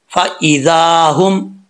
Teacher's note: यह हा जो है दो आंखों वाला है भारी आवाज के साथ पढ़ा जाएगा भारी साउंड के साथ हम आगे है जमील दना जमी मीम